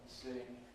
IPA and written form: sɪŋ (sing)